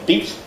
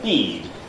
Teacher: John Wells' term has become used worldwide now, pre-fortis clipping. Vowels before lenis consonants have full length. · Say here, beat, everybody? Short vowel, and then bead. And the vowel lengthens. Only before the fortis is it clipped.